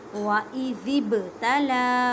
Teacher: با ساکن ہے، اس وجہ سے یہاں پر کلکلا کرنا ہے. کلکلا کا مطلب ہے ہلا کر پڑھنا.